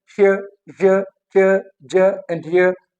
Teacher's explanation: श, j, ch, j and y, these are palatals